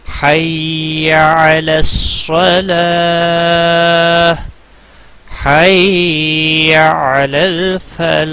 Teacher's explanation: فلاح یہاں پر حروف مد ہے، مد کے بعد ساکن ہا آ رہا ہے وقف کی صورت میں، تو اس کو 4 سے 5 سیکنڈ آپ لمبا کر سکتے ہیں